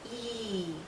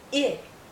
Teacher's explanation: between E and it well first of all it's about length E is a very long sound e it is shorter